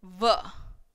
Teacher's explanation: And this sound is wa and this sound is v. This is a labiodental sound.